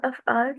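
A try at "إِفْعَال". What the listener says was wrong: افعال ہوتا ہے، افعال نہیں ہوتا، ٹھیک ہے. شروع میں ضرور زبر آتی ہے انذرا، لیکن باب افعال ہوتا ہے. اس کو کیوں آپ نے زبر پڑھا پھر؟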